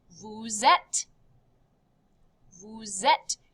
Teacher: You kind of connect this Z sound, right?